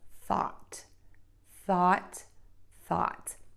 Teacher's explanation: And then we're going to have the open, short ah, oval mouth, wide open. That allows the tongue to get low in the mouth, the tip of the tongue low, and the back of the tongue to be pulled up. So we have thought, thought, thought. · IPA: /θɔt/